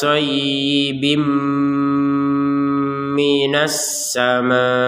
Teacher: dimasukkannya yang bin ini kepada mim sehingga cara bacanya aim minasama jadi yang awalnya bin menjadi Bim Kemudian ini kan namanyaun jadi wajib disertai dengan dengungan tidak sekedar